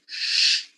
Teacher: then you're pronouncing a voiceless palatal fricative sound, which is in this case sh.